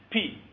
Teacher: you build up a pressure first and then release it abruptly